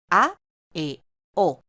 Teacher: Se clasifican de esta forma porque para pronunciarlas tienes que abrir más la boca, por lo que suenan más alto que las otras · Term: abiertas o fuertes